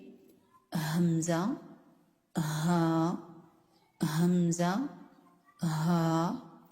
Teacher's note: यह वो हुरूफ हैं जो अक्स हलक से अदा होते हैं। अक्स हलक यानी हलक के नीचे वाले हिस्से से अदा होते हैं। · हमजा हा हमजा हा आप अदा करके देख सकते हैं कि जब हम हमजा और हा को अदा करते हैं तो हलक के निचले हिस्से में वाइब्रेशन पैदा होती है।